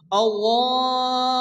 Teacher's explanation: হামজা একই শব্দের মধ্যে আসছে, মধ্যে মুত্তাসিল চার আলিফ টেনে পড়তে হবে।